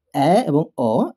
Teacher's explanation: অ্যা এবং অ, এই দুটি ধ্বনি উচ্চারণ করতে গিয়ে আমাদের জিভ উচ্চারণ করতে গিয়ে যতটুকু নিচে নেমেছিল তার থেকে একটু উপরে উঠেছে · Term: নিম্ন মধ্য স্বরধ্বনি